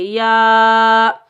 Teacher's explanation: وَقُلْنَا، یا کے اوپر کھڑا زبر، اوپر چھوٹی مد ہے، مد منفصل جائز، اس کو ہم 3 الف کی مقدار کھینچ کر ادا کریں گے